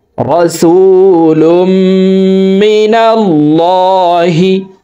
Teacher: আল্লাহ শব্দের আগের হরফে জবর অথবা পেশ হইলে এই লামকে ল অর্থাৎ মোটা করিয়া পড়িতে হয়